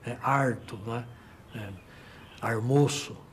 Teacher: o famoso R retroflexo, que é típico da área caipira